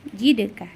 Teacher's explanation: cara membacanya dipantulkan dan tidak terlalu kuat ya karena e huruf Dal di sini tepatnya ada di tengah-tengah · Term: Qalqalah Sugra